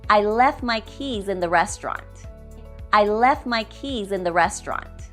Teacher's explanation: we will drop the T in the word left so we can sound more natural